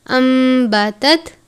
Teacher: ہم اس حرف کو یا لفظ کو ان نہیں پڑھیں گے، یعنی نون نہیں پڑھنا، انبتت میم کی آواز کے ساتھ پڑھنا ہے کیونکہ اخفا کرنا ہے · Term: اقلاب